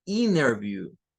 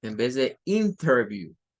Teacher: el norteamericano promedio acostumbra en su diaria pronunciación a que donde hay una n con una t la t se convierte en otra n